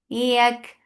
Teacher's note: Yak for fatha upon jaws attached with kaf. Kaf will get sifa of hams, and hams is flow of breath.